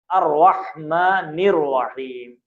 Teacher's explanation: الرحمن، یہاں پہ بھی رے کو موٹا پڑھیں، را کیونکہ زبر ہے تو موٹا پڑھا جاتا ہے